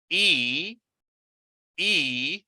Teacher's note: according to the position of the tongue, my tongue is up and front. That is close and up, or front.